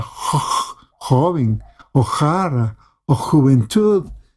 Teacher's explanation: Para hacer las J en español se envía toda la lengua atrás